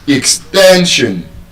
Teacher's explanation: If you look at the way you are pronouncing the word, extension, The last syllable is SION. And so the stress will be on the second to the last syllable